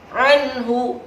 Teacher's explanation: ada no sukun bertemu dengan huruf H dibaca dengan jelas disebut dengan izhar halqi